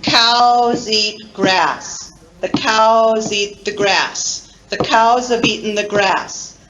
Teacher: pronounced with full vowels so the three words cows eat grass cows eat grass those words receive stress and they contain full vowels